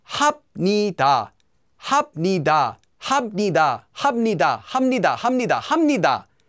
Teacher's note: If the second syllable then begins with the consonant 니은 or 미음, the 비읍 will become pronounced as 미음.